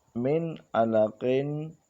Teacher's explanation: نون ساکن کے بعد عین حروف حلقی میں سے آیا ہے تو یہاں پر بھی غنہ نہیں ہوا بلکہ اظہار ہوا ہے